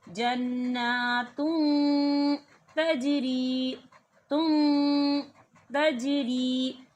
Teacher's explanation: तनवीन की आवाज़ को नाक में छुपाते हैं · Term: इक्फ़ा